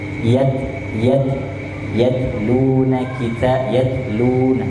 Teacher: taknya ini sukun mati, dia ada sifat hamas, dikeluarin sedikit